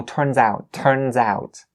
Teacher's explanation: You link the word, the Z sound at the end of the word turn to the out